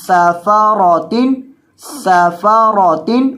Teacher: سین کے اندر سیٹی کی آواز پیدا کریں گے، سَفَرَةٍ سَفَرَةٍ، اور وقف کریں گے تو اس گول تا کو ہائے ساکنہ سے ساکن ہا سے بدل دیں گے وقفاً، بِأَيْدِي سَفَرَةٍ.